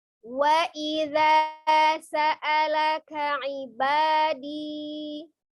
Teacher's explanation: alifnya bukan sebagai penanda panjang, maka sa'a dibaca pendek ya